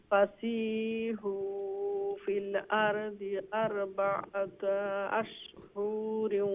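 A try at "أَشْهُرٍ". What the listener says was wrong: আশহুরিন, ইনো হু লঙ্গইতো না, আশহুরিন ওয়া আলামু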